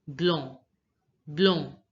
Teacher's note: And the last letter C is not pronounced.